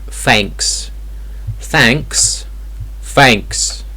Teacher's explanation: if it's like a soft th sound like in thank you or think often it's pronounced like an F sound